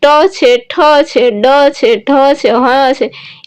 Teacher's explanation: ત્યારમાં મૂર્ધન્ય એટલે કેવા, તો કે જ્યાં આપણે જીભને કેમ ટકોરો મારતા હોય, જ્યાં આપણે બોલતા હોય ત્યાં આપણે જીભ છે એ તાળવે આમ ટચ કરી અને પાછી આવતી હોય એવું તમને લાગે